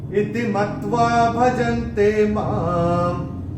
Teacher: मां के ऊपर अनुस्वार चरण की समाप्ति पे आ रहा है तो इसका उच्चारण केवल और केवल म ही होगा